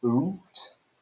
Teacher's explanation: It's a diphthong, but in Geordie English it's a single long vowel.